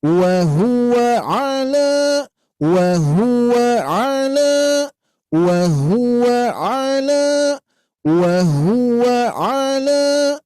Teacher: Nanti larinya wa huwa alanya agak naik sedikit ya.